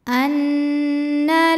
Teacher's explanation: lunas Lau Anna kemudian ada hukum ghunah musyaddadah karena Nun bertasdid cara bacanya dengung bunyi n tahan sampai ada suara masuk hidung kurang lebih dua harakat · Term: gunnah musyaddadah